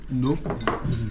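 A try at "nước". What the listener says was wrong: Nook, not nuke. Yeah, you don't release it. Like the ending K is a nuke.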